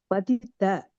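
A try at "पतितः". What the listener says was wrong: The F sound will come. Vapurut patitaf purastat. Correct.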